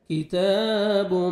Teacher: کاف کو باریک پڑھیں گے، کی. تا کو بھی باریک پڑھیں اور 1 سیکنڈ آپ نے کھینچنا ہے، کھڑا زبر ہے